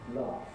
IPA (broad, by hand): lɑːf